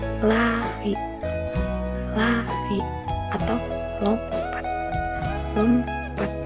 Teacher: ujung lidah menyentuh gusi atas dan udara mengalir lewat sisi lidah. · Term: huruf L